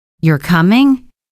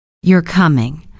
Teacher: The first one has a rising tone, it's a question. The second one has a falling tone, it's a statement.